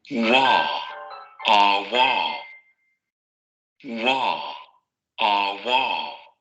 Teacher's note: Sonora, labiovelar, aproximante.